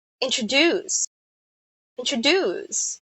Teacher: So there are three syllables, and the last syllable is being stressed.